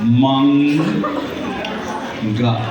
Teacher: ಸೊನ್ನೆಯ ಮುಂದೆ ಈ ಅನುಸಾರದ ಮುಂದೆ ಈ ಕ ಖ ಗ ಘ ಈ ಅಕ್ಷರಗಳು ಇದ್ದರೆ ಈ ಅನುನಾಸಿಕದ ಸೌಂಡ್ ಬರುತ್ತೆ